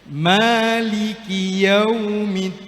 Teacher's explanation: Nah, ini ki-nya jangan panjang. Maliki itu satu-satu harakat.